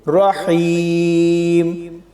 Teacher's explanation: جب یہاں پر وقف کریں گے تو میم کے نیچے 2 زیر کو جزم کے ساتھ بدل دیں گے